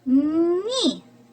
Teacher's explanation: звук і пом'якшує попередній приголосний звук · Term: М'який приголосний